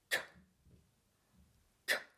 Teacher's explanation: K is a plosive sound. It's created with a high back of the tongue, so high that it's touching the soft palate. It creates a bit of pressure and then releases. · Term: K of kilo